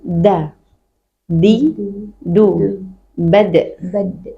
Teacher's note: Di makhraj yang sama, tapi dal bedanya tidak boleh ada hembusan apapun